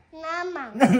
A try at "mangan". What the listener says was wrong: Not na. It's m o ma. Mangan.